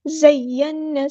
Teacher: نون پہ غنہ زمانی ہو رہا ہے